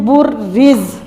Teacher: پھر را زا کے ساتھ مل جائے گی کیونکہ زا ساکن ہوگی، اس وجہ سے را کو زا کے ساتھ ملا دیں گے، برز۔